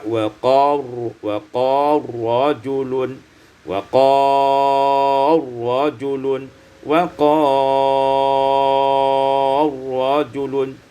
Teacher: Pada ayat yang ke-28 wa qala rajulun menjadi idghamul lam fi ra